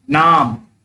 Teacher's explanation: जब मैं नाम बोला तो आ की मात्रा जो है कुछ लंबा खिंचा हुआ था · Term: दीर्घ स्वर